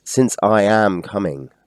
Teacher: Since is unstressed. I is stressed.